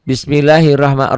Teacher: Ya, ini ro-nya dibaca tebal. Tabkhim.